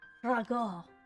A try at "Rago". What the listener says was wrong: Yeah, I gotta roll your R's.